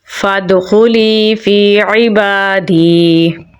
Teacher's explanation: عین کو گلے کے درمیان والے حصے سے نکالیں گے، با پہ کھڑی زبر ہے تو لمبا پڑھیں گے۔